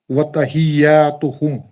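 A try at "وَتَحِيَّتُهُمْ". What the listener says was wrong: تحیتہم یاتہم میں ایک ہی حرکت زبر کو ٹچ کرنا خالی تحیاتہم بولے تو آپ الف فٹ کر دیا بیچ میں دو حرکت کر دی وتحیتہم فیہا سلام ماشاءاللہ ویری گڈ زبر آپ نے اچھا پڑھا لیکن تھوڑی پریکٹس کی اور ضرورت ہے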